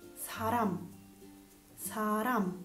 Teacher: che è pronunciata a volte come una elle a volte come una r che però un po più leggera rispetto a quella italiana non così marcata